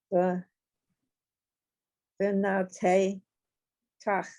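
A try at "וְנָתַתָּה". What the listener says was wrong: they're all ahs in this one. Vina ta, ta. Right, vina ta ta. They're all ahs.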